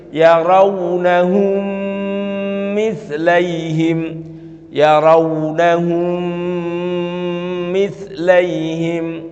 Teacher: Mim sukun bertemu dengan mim. Maka seakan-akan mimnya itu jadi satu dengan didouble dan ditahan, diidghamkan jadi satu. Kalau kita mendengarkan itu seakan-akan mimnya itu hanya satu yang didouble, padahal itu mimnya itu dua. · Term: idgham mislain